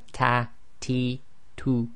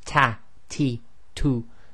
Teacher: In English it will be ta, ti, tu. So the hams, or the aspiration, is slightly softer than in the English due to the positioning of the tongue